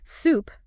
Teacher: Soup, the hot liquid meal, requires an ooh sound with the lips pushed forward.